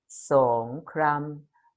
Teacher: Rising tone followed by mid tone.